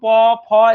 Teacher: প ফ এগুলো উচ্চারণ করতে গেলে দেখো ঠোঁট দুটো লেগে যাচ্ছে